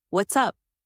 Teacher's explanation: With what's up, let your tone rise to show interest and energy.